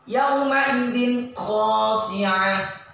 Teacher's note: Ya, bacanya ini tanwin ini ketika ketemu kho harus dibaca jelas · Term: idhar